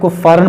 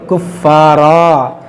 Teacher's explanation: یہاں پر دیکھیں وقف ہے، اس کو کفارا پڑھیں گے، اسے کفارن نہیں پڑھیں گے. اگر ملا کر پڑھیں گے تو کفارن پڑھیں گے، یہاں وقف کریں گے تو کفارا